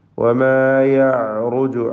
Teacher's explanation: വമാ യഅറുജു ഐനിൻ്റെ ഉച്ചാരണം പ്രത്യേകം ശ്രദ്ധിക്കുക. ഐനിനെ അതിൻ്റെ മഖ്റജിൽ നിന്ന്, തൊണ്ടയുടെ മധ്യത്തിൽ നിന്ന് ഉച്ചരിക്കണം. തവസ്സുത്തിൻ്റെ ഹർഫാണ്.